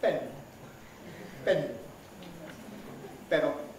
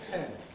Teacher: So the air expelled by the lungs surges out. In Spanish, immediately you separate the lips, the vocal folds start vibrating. In English, they don't. · This is aspiration, which is because the separation of the articulators is followed by a brief period of voicelessness, during which the articulators have separated, but the vocal folds are still apart. So the air expelled by the lungs surges out.